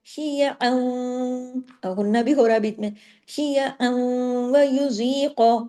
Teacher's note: شیعا، اب دیکھیے شی زیر شی یا زبر یا، شیعا، عین دو زبر ان کی تنوین آ گئی، لیکن تنوین کے فوراً بعد آگے تشدید آ گئی، کیا ہوا، تنوین ختم، ادغام ہو گیا، عین جا کے واو میں جڑے گا